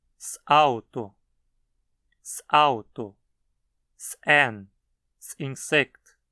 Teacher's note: Você precisa fechar a garganta entre o S e a palavra seguinte, pronunciando uma parada glotal